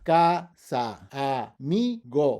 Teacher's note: Second to last, again, we end in a vowel, so the stress is on the second to last